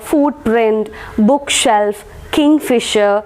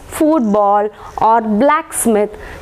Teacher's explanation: stress will be given to the first syllable